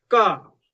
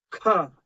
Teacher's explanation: अब अगला बोल रहे हैं महाप्राण का एक ख अक्षर देखिएगा। ख जिसमें वायु ज्यादा निकल रही हो। हकार आ रहा हो।